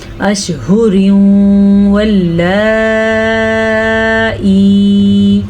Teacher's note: تنوین کے بعد یا میم واو نون میں سے واو آیا ہوا ہے تو یہاں پہ ادغام بالغنہ کا قاعدہ ہو رہا ہے